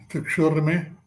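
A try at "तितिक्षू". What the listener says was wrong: Titikshu, not tikshu. Tikshur. Read properly.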